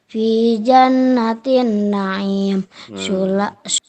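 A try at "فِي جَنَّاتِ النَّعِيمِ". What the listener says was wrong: Nah, yang pertama panjang fi jannatin.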